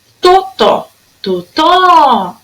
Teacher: A sílaba mais forte era o tó.